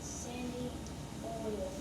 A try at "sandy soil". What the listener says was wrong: Not oil, what does that say?